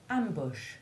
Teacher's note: short u1 is always in a stressed syllable though occasionally it is a secondary stress as in ambush where the primary stress is on the first syllable